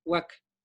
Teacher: El acento recae sobre la primera vocal, UA. Y es más, cuando recae sobre la primera vocal, estamos haciendo una vocal totalmente plena. UAC, UAC. No es una consonante labiovelar, UAC.